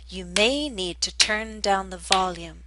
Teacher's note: it makes more sense to stress the verb turn